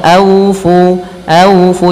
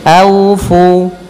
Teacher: jangan au, jangan pakai o tapi pakai u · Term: bacaan lin